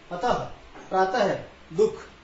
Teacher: विसर्ग का चिन्ह हमारे पास, जिसे दो बिंदी हम कह रहे बिंदु, जिसे कॉलम कहते हैं, विसर्ग चिन्ह कहते हैं। इसके अंदर इसका उच्चारण करते हुए ह की आवाज निकलती है, अर्ध ह की आवाज निकलती है